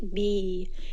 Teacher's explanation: And then also for the kasra, if we have the word bi, or the letter b, ba with a kasra, and the next letter is ya, this will be a two-count med tabi'i